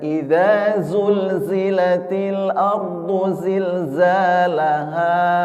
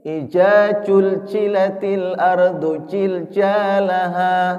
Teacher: tidak bisa membedakan antara zai sama cim ya